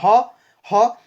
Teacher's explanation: এটা মানে কণ্ঠনালী থেকেই উচ্চারিত এক্ষেত্রে জিভা কারো সঙ্গে কোন স্পর্শ করে না আপনি উচ্চারণ করে দেখুন হ দেখুন জিভা নরমাল থাকছে কিন্তু এখানে · আপনি উচ্চারণ করে দেখুন না, হ হ, দেখুন জিভা নর্মাল থাকছে কিন্তু এখানে উচ্চারণটা আপনার কণ্ঠের যে নালী সেখান থেকে উচ্চারণটা আসে, তাই হকে বলা হয় কণ্ঠনালীয় ব্যঞ্জন বা কণ্ঠনালী কণ্ঠবর্ণ। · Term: কন্ঠবর্ণ